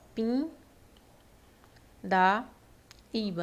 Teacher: Eu tenho esse n nasalizando esse I Então eu tenho o que aqui ó um dígrafo vocálico né